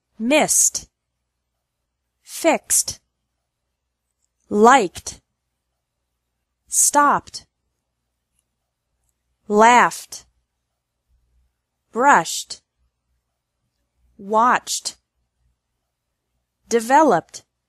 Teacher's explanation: e d is pronounced like T with no extra syllable after verbs ending in s x k p f sh and CH sounds